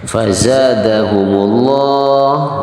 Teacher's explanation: fazaza panjang dua harokat, hukumnya adalah mad tabi'i.